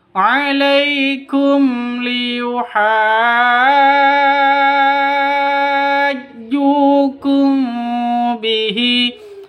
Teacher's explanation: Mim mati bertemu dengan lam, jelas, terang karena bacaan izhar safawi.